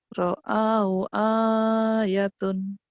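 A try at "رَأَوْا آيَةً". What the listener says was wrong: ra'au ayatan, bukan tun tapi tan.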